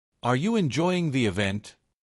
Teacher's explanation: The voice rises on event. This signals that a response is expected. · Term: rising intonation